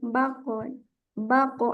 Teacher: diantulkan hati-hati di pantulannya diaanganampai kita menambahkan Hamzah di akhirnya baqo jadi dia pantulannya mengambang baqo baqo hati-hati tetap dipantulkan dan sifat istirnya tetap ada I ulang sajaang